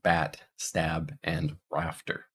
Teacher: this is our low front unrounded lax vowel, as in bat, stab, and rafter. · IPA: [æ]